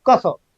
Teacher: माने की क वर्ग क ख जो अक्षर होगा वो कंठ से बोला जाएगा